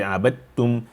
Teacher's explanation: the dal will disappear, and then the ta will take a shape of emphasis.